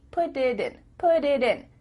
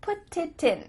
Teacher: your tongue is just tapping the top of your mouth to make a d